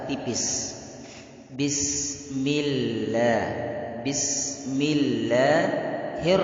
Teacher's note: menipiskan huruf lam pada kalimat bismillah bilang itu tidak boleh kita baca-baca tebal harus kita baca tipis